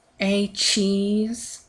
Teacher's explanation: you can hear that pause between the a and the CH